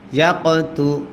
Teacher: কফে যদি সাকিন হয় কল কলা করতে হয়